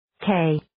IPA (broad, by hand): keɪ